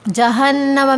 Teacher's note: جہنم میں نون مشدد ہے، اور نون مشدد جہاں ہوتا ہے وہاں پر غنہ کیا جاتا ہے